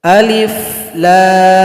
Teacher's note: lam ada mim sukun mim juga ada mim sukun di belakangnya di antara huruf lam dan huruf mim harus ada dengungan